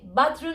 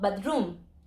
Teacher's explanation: you say BATHroom and not bathROOM because you have a stress syllable in there